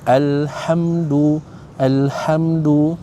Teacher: Alhamdu mim mati bertemu dengan dal hukumnya adalah izhar syafawi. Kena jelaskan bunyi mim tu. Jangan dengungkan.